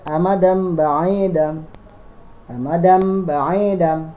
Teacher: N-nya langsung dirubah bunyinya menjadi M. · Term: iqlab